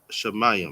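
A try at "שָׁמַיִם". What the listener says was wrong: Sa. Sa. And that's the sh. SHA is sh. SA is sa. Sh. Sa. Mayam. Mayam.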